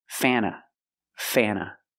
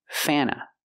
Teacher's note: when you have NT between vowels, you don't really hear the T.